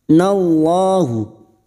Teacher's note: lam jalalah yang sebelumnya fathah kita baca tafkim